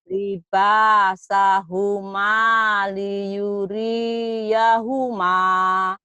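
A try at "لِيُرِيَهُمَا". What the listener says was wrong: Kenapa rinya panjang? Liuriyahuma pendek. Karena kan ada yang manjangin. Kan nggak ada yang mata. Libasahuma liyuri. Liyuriyahuma. Liyuriyahuma.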